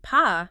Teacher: When you say P for afraid, you should feel a little burst of air in your hand if you hold it in front of your mouth. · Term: aspirated